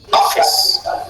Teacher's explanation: it's true that the stress is at the level of off, the first syllable, but you don't say or, you don't take it long